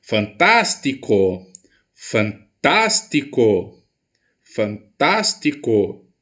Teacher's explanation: a minha sílaba mais forte cai na antepenúltima sílaba dessa palavra